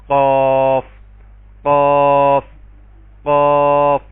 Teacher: زبان کی جڑ اور اوپر سے جو قبے سے متصل تالو ہے اس سے ملائیں گے تو قاف کی ادائیگی ہوگی۔ اس کو ہم پر کر کے پڑھیں گے، موٹا کر کے پڑھیں گے، قاف قاف قاف۔